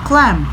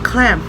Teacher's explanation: ketika kita menyebutkan clam, ada udara yang terkunci di mulut kita, tapi setelah itu udara itu kita keluarkan lewat hidung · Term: nasal